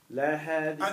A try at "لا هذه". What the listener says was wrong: See you got if you say think about what you're saying. You got to pause. لا. See you can't just go right into.